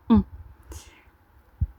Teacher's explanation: Pour on, mettez-vous devant un miroir, comme pour la vidéo précédente, pour la prononciation, et observez. On a les lèvres arrondies, c'est un son nasal, on, et la langue est en arrière.